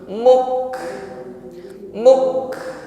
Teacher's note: Jadi bentur dulu pada kafnya dengan kuat, baru hamznya. Jangan langsung hamz.